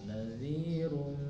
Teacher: Nadhirum ditahan karena ada tanwin dhamah bertemu dengan huruf mim jadi idgham.